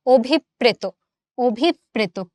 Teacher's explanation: আমরা অ টাকে অ রাখি না ও তে কনভার্ট করি।